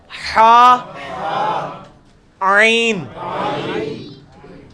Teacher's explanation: وسط حلق سے نکلے گا حا, عین